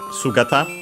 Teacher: accent on the first syllable